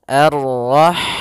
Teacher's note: Ha dia memiliki sifat hamas, yaitu maka harus mengalirnya nafas.